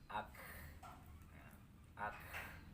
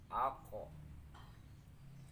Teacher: Hamas ini adalah berangin, menghembus napas ya. Ketika huruf itu mati akan terdengar desisan napas ya.